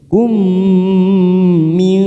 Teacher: mim sukun bertemu mim, namanya idgham mimi, kita tekan 3 ketuk siap masuk pada huruf mim